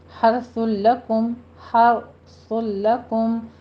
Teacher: اوپر تنوین کا قاعدہ ہمارے پاس آ رہا ہے، ادغام بلا غنہ کریں گے